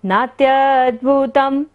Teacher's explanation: ता के ऊपर बिंदी है और बाद में क्या आ रहा है, भ, तो यहाँ पर बिंदी का उच्चारण क्या होगा, म।